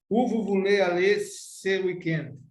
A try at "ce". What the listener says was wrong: A pronúncia, quando você fala aberta, C, automaticamente eu entendo como plural. Então, está falando que esse final de semana, este final de semana é singular. Como que fica aqui, então, a pronúncia? Se. lembrar lá, como que eu digo eu em francês? Eu vou manter aqui a pronúncia concernente à vogal E.